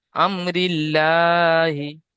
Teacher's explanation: আল্লাহ হবে না, আল্লাহ নামের ওপরে আল্লাহর নাম তার আগে জের এসছে, ওই জন্য আল্লাহর নামকে বারিক পড়তে হবে